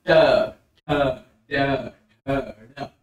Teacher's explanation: जैसे ट वर्ग में हम बोल रहे हैं ट ठ ड ढ ड र और श, इसके उच्चारण में यानी मूर्धा के उच्चारण में जीभ ऊपर वाले दांत के और तालू के बीच में, यानी ऊपर वाले दांत और तालू के बीच में जीभ को मोड़ कर ले जाएंगे और उसके जीभ के नुकीले भाग से बोलेंगे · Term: मूर्धन्य